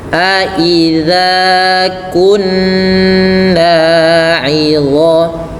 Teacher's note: Aidza kunna 'idhaman, tahan karena dia terdapat bacaan gunnah pada lafal nun bertasydid, dan ini cara bacanya harus ditahan